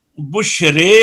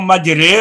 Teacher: तो इमाला करने वालों के यहाँ अलिफ को इमाला से पढ़ा जाएगा, तो मा कबल अलिफ की जो हरकत है वो भी ना खालिश कसरा होगी ना खालिश फतह होगी, बल्कि कसरा और फतह के दरमियान